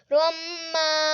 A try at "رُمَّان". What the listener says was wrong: نہیں پھر غنہ نہیں روم غنہ آپ نہیں کرتے